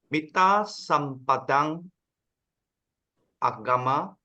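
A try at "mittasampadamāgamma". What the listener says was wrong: There's no, you can't say sampadang. It has been combined already. Mitta sampada maga. It's combined together, so there's no. Magama.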